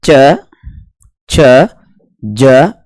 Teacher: ये स्पर्शी तो हैं लेकिन इनके उच्चारण में संघर्ष भी करना पड़ता है इस कारण इन्हें क्या कहते हैं स्पर्श संघर्षी भी कहते हैं